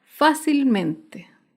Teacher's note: fácilmente se acentúa en la sílaba anterior a la antepenúltima sílaba